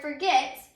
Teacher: when you say the word forget, the accented syllable is the last syllable, and then when we added the suffix able to the word forget, the accented syllable was also the last syllable in forgettable.